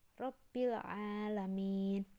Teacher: qamariyah alif lamnya itu terbaca jelas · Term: alif lam qamariyah